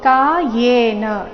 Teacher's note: ಎ ಅಲ್ಲ ಯೇ ಬರಬೇಕು. ವ್ಯಂಜನ ಯಕ್ಕೆ ಏಕಾರ.